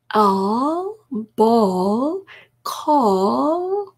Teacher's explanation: 어 소리와 흡사하죠. 어, 이렇게요. 어 하면서 목구멍이 열리는 소리가 되겠습니다. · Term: dark L